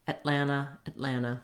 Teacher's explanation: So that first vowel is very reduced, very short. May mean that it sounds a little bit more like an red tent vowel, or even like an as in it.